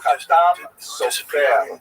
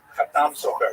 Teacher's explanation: some of the consonants are slightly different, and the emphasis tends to be on the last syllable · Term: Sephardi pronunciation